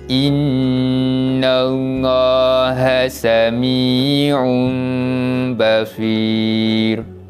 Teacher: cara bacanya menggantikan bacaan nun mati dan tanwin tersebut kepada huruf mim, dan jangan lupa untuk bacakan dengan bacaan dengung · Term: bacaan iqlab